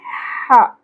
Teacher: ہا کو ہم وسط حلق سے ادا کریں گے